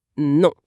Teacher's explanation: Il faut imaginer que l'air, au lieu de sortir que par la bouche, est dévié pour vibrer aussi dans le nez. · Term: son nasal